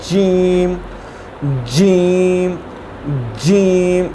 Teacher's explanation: ज़बान का जो दरमियान वाला हिस्सा है उसको जो हमारे तालु का सख्त हिस्सा है उसके साथ लगाएंगे तो ये अदा होगा